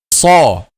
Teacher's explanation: And to pronounce a heavy letter, just the back of the tongue is raised. The shape of the lips or the mouth doesn't change.